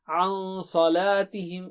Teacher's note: نون کو چھپائیں گے آپ اور اس کو غنہ اور ڈبل حرکت سے کریں گے